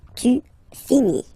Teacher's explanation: You don't pronounce the final S.